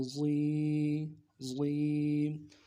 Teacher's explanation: یا مدہ ہے، ایک الف مقدار میں کھینچنا ہے۔